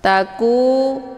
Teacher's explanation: Tandanya ada alif, sebelumnya harokah fathah. Taku, ku juga dibaca panjang 2 harokah. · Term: mad tabi'i zahiri